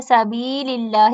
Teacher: فی، یا مد ہے، سبیل اللہ، یا مد اور اللہ کا نام باریک پڑا جائے گا